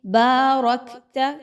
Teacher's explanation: کاف پر جزم کا نشان ہے تو اس میں ہمس کی خوبی کو لائیں گے